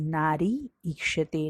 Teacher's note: नारी में का जो ई है वो भी दीर्घ है और इक्षते में जो ई आया है वो भी दीर्घ है। दोनों दीर्घ ई मिलकर ही दीर्घ ई ही होता है।